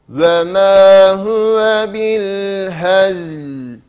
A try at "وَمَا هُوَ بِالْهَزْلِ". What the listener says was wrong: Ağzımızı biraz daha açıyoruz.